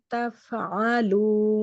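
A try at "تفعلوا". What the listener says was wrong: বেশি প্রেশার হচ্ছে, যার জন্য তাফ তাফ এরকম সাউন্ড হচ্ছে, ফ্লোয়িং সাউন্ড হবে। তাফ তাফ তাফ বেশি প্রেশার দিলে তাফা তাফা এরকম হচ্ছে।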